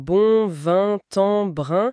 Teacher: Le piège typique, c'est de vouloir prononcer le N ou le M qui suit la voyelle comme on le ferait dans des mots comme bonne ou femme. Or, pour des mots comme bon, vin, brin, il faut que l'air passe aussi par le nez pendant qu'on aimait la voyelle mais sans articuler la consonne nasale N ou M. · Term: les voyelles nasales